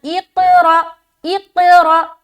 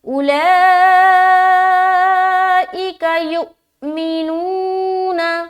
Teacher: جہاں جہاں بھی حمزہ کے اوپر سکون آ جائے تو آپ نے جھٹکا دیتے ہوئے پڑھنا ہے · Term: حمزہ ساکینہ کا جھٹکا